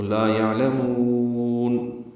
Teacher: لا الف مد ہے. یعلمون میں عین ساکن پہ اظہار ہے، لام باریک جلدی پڑھا جائے گا. میم کو لمبا کریں گے، وقفاً نون ساکن پہ اظہار ہے اور مد عارض سکون بنے تو لا یعلمون.